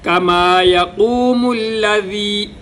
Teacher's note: واو پہ ہونٹ گول، قاف موٹا